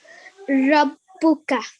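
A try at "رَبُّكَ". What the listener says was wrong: Let's say that one more time, but this time try and give it a bit more of a round mouth, yeah? Rabbuka. And here we have a shadda. What do we normally do if a letter's got a shadda on top? You put pressure on it, yeah?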